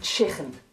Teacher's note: You may hear some people from Liverpool saying chicken with a kh sound in the throat. This is very unique to Liverpool. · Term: K sound